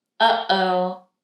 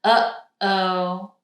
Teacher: Notice I'm not just saying oh because that would be without a stop in the middle.